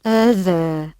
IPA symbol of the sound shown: ð